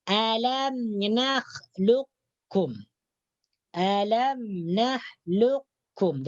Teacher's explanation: Jadi qafnya ini diidghamkan kepada huruf kaf. Ini disebut dengan idgham mutaqaribain.